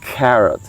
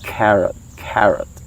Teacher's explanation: When you pronounce the carrots, so the K should be enunciated very well. It should have a puff of air